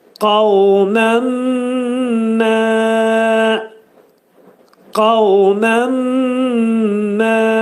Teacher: Yəni, bax, burada göstərilib altdan, mə'al-ğunnə. Yəni, nun hərfi mimə çevrilir və burunda deyilir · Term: idğam mə'al-ğunnə